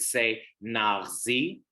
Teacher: So it's like almost not like a ch we have in Hebrew, but more like a r in French, the R. It's very guttural.